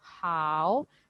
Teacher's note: लेकिन हाउ पे third tone है, मतलब मुझे पहले आवाज नीचे करनी है फिर ऊंची करनी है.